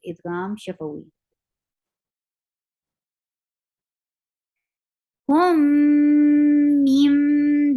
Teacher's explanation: You're keeping the sound in your nose.